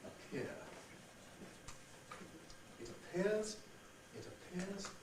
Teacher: this P is not at the beginning of a word, but it is at the beginning of this stressed syllable. So you get aspiration.